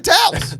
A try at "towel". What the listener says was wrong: Do you guys feel like he says that word weird? It's like it's one syllable. You say towel.